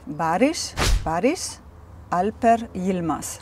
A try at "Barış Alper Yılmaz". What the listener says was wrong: Oh, that's really good pronounced.